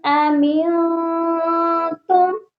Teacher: میم ساکن ہے، اس پر غنہ بالکل نہیں کرنا۔ یہاں پر ہم نے اظہار شفوی کرنا ہے، یعنی کہ بس اظہار کرنا ہے کہ میم کو پڑھا ہے، لیکن غنہ ہرگز مت کریے گا۔